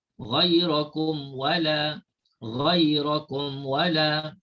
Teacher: Jelaskan mim mati tanpa dengung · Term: izhar syafawi